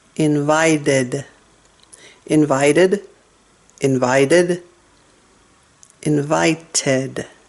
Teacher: Be careful with those stops, the glottal stop and the alveolar stop.